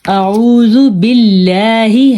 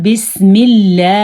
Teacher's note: अगर अल्लाह के नाम से पहले जेर हो तो उस अल्लाह के नाम को बारीक पढ़ा जाएगा